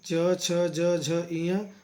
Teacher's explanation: च, छ, ज, झ, ञ वो तालु से बोले जाते हैं। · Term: च वर्ग